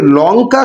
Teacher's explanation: লঙ্কা শব্দের এই ল উচ্চারণ করতে গিয়ে সেটা দন্তমূল থেকে উচ্চারিত হচ্ছে। তাহলে ল এর এখানে উচ্চারণ দন্তমূল থেকে।